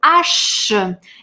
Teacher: Эту «ш» мы длим и тянем, мы настаиваем, что там «ш» на конце.